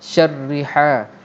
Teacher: Ain tu macam tersedak, ha macam terpedas sebab laluannya sempit. Jadi ha, syarriha.